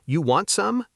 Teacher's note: You want some, said with rising intonation at the end, is completely understood as an offer